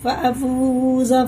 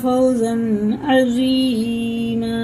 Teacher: واو ساکن سے پہلے پیش ہے تو الٹے پیش کی طرح کھینچ کے پڑھیں گے، لیکن واو ساکن سے پہلے زبر ہے تو جلدی پڑھیں گے، یہ حرف لین ہے